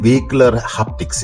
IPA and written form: vɛˌhɪkjʊlər ˈhæptɪks (vehicular haptics)